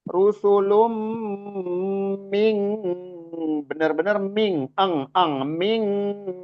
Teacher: dengung, gunnah dan ditahan 2 harokat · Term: ikhfa